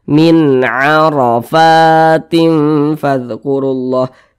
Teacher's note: Maka nun sukun berjumpa dengan huruf ain, hukumnya adalah izhar halqi. Karena dia izhar, maka dibaca jelas, tidak berdengung. Jadi dibaca pendek saja.